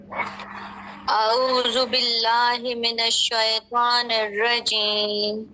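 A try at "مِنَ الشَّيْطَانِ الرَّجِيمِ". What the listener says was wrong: ऐसे पढ़ेंगे, मिनश शय, शय नहीं करेंगे, मिनश शई, शई तो दोबारा से।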